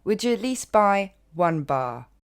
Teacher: You will hear at least. And the T tends to disappear also at the end of least.